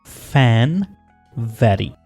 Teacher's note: ऐसे साउंड्स जो लिप्स और टीथ दोनों के साथ प्रोनाउंस होते हैं। लेबियोडेंटल साउंड्स में लोअर लिप और अपर टीथ आपस में टच करते हैं, आपस में कॉन्टेक्ट करते हैं।